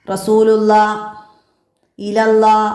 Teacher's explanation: നാവിൻ്റെ മുരട് അണ്ണാക്കിക്ക് ഉയരുമ്പോഴാണ് അവിടെ തഫീം ഉണ്ടാകുന്നത്. വായ നിറയെ ശബ്ദമുണ്ടാക്കും വിധം അക്ഷരത്തെ തടിപ്പിച്ച് ആണ് നമ്മളവിടെ ഉച്ചരിക്കുന്നത്